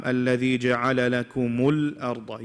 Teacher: Do not make the qalqala on the lam.